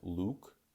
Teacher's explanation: my lips are quite forward and quite rounded